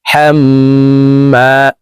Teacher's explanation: মিমের সাথে তিন সেকেন্ড পরিমাণ গুন্নাহ করে ধরে রাখবো।